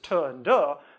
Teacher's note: English has the alveolar plosives